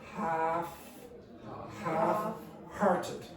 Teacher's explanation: The L is not pronounced.